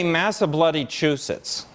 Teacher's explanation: Stick bloody between 2 syllables, make sure the second one's stressed.